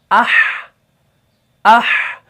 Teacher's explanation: دیکھیں آواز جاری ہے, آواز جاری ہے اور نرمی بھی اس کے اندر ہے. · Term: صفت رخاوہ